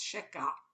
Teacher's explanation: It's the ayin sound, which if you pronounce properly, it's sheka. It's a guttural sound